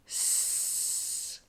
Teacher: s with the blade of your tongue that's this bit here lightly pressing against the alveolar Ridge allowing air to pass through the middle like this again now say with your tongue lightly pressed against